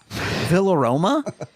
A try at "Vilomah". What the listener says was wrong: No, there's no R.